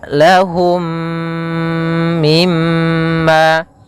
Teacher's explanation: dengan Idgham Mimi idgham mim mim yang kedua mim cara membacanya masukkan mim yang pertama kepada mim yang kedua kemudian ditahan gunahnya